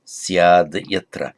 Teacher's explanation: From syad, from the root as, the optative form would, if it were a regular verb, be asyat, but the first a is dropped, and so it becomes syat, and then syat followed by a voiced consonant, here yatra, then the syat, the t becomes a d